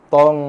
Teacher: Ikhfa yang tebal sebab huruf to tebal, bersifat tebal.